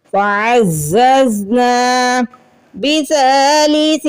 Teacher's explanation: اخفا مطلب ناک میں نون کی آواز کو چھپانا، یعنی چھپا ہوا غنہ کرنا. تنوین یا نون ساکن کے بعد فا آ جائے تو فا چونکہ حروف اخفا میں سے ہے اس لیے ہمیں یہاں پہ اخفا کرنا ہے.